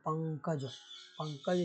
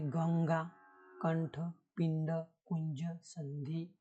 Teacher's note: જે અક્ષર ઉપર તીવ્ર અનુસ્વાર હોય એટલે બોલતી વખતે એના પર ભાર વધારે હોય